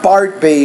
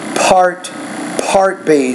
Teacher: you want to make sure that you're producing the P with more air than what you're doing